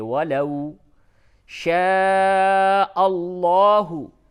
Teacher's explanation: واو ساکن سے قبل زبر ہے تو یہ واو مدہ نہیں بلکہ واو لین ہے، نرمی کے ساتھ بولیں گے